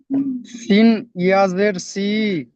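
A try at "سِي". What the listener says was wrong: একটু টান দেন শেষে একটু টান দেন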